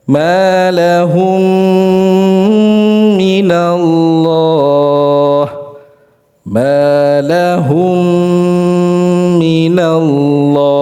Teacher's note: Karena mim sukun langsung dimasukkan ke dalam huruf yang mim yang berharakat ya. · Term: ghunah musyaddadah